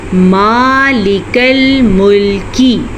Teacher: میم کے اوپر کھڑی زبر ہے تو کھڑی زبر کو ہم کھینچ کے پڑھیں گے